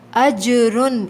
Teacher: جیم پہ قلقلہ کریں گے، آواز پلٹ کر آئے گی، اجرن، یہاں دیکھیں را کے اوپر تنوین ہے لیکن ہمیں غنہ نہیں کرنا۔